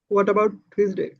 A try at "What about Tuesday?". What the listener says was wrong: না হ সাউন্ডটা যেন না হয়, হ্যাঁ, normally হোয়াট অ্যাবাউট টিউসডে, হোয়াট অ্যাবাউট টিউসডে।